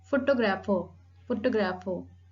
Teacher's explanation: the primary accent is on the second syllable, photographer, grapher, the second syllable.